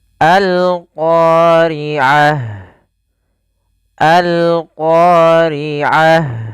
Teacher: Apa itu alif lam qamariyah? Yaitu alif lam yang kita tuliskan dan kita baca suara lamnya dengan jelas